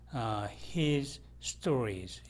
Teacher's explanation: his stories 이런 경우에 이때 Z는 생략됩니다.